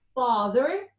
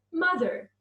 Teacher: the sound father is much longer than the sound mother